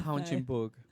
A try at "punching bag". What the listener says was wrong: You did say punching bug. No, you didn't say bag. You said bug.